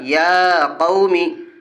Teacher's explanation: یا کے اوپر کھڑا زبر ہے، کھڑا زبر برابر ہوتا ہے الف مدہ کے، اس لیے کھڑا زبر کو ایک الف کے برابر کھینچ کے پڑھیں گے۔ واو ساکن سے پہلے قاف کے اوپر زبر ہے، اس لیے واولین ہوگا۔